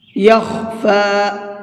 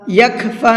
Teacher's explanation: خا کو پر کر کے پڑھیں گے۔ یخفا، یکفا نہیں پڑھیں گے اس کو۔